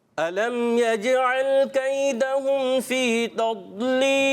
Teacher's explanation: ضاد جو ہے یہ قرآن پاک کا ایک ایسا حرف ہے کہ اس کو آپ نے موٹا کرنا ہے